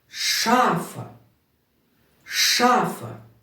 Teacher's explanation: і тепер як завжди Ми зробимо наголос шафа шафа Все вірно ми наголос зробили на перший голосний а